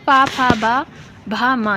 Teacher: प फ ब भ म ये कैसी है? तो ये आपकी ओष्ठ ध्वनियां हैं